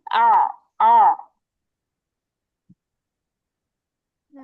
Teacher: কণ্ঠকে একটু চাপাইয়া হলকের মধ্যখান থেকে উচ্চারণ করতে হয়। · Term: আইন